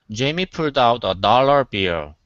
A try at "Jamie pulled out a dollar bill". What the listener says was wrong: Let's go back to pulled. Instead of pulled, okay, open your mouth a little bit more.